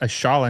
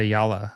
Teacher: sometimes double L can be like a sh sound